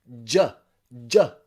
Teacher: we already heard number one is the j j sound where your tongue starts on your alveolar ridge your vocal cords vibrate and you push your tongue down